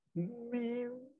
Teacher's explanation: Jadi bila suara kita keluar daripada watar as-sautiyah ni, dari rongga mulut ni, daripada dalam, dia nak keluar sampai di sini, dia dah kena tutup pintu ni. Mim dia tutup dah dua bibir mulut. Lepas tu nak keluar juga, dia cari alternatifnya, jalan alternatifnya keluar ke hidung. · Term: dengung